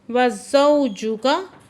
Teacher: वाव साकिन से पहले ज़बर है तो वावलीन है, नरमी से पढ़ रहे हैं।